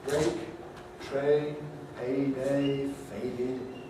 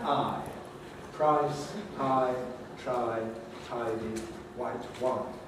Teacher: notice that in a and i we've got diphthongs which move from a starting point to an end point